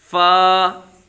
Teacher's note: वा दोनों होठों की गोलाई से अदा होता है जबकि फा ऊपर के दांतों के अंदरूनी किनारे और निचले होंठ का तर हिस्सा